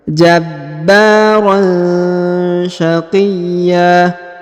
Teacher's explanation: Huruf ya ditahan dan ditekan, lalu dipanjangkan 2 harokat dan alif tanwinnya atau annya berubah menjadi a ya, atau fathah.